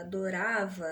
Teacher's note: você tem a acentuação, né, a tonicidade recaída na penúltima sílaba.